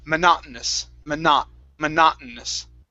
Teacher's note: the actual way that we pronounce this, okay, is we drop the T.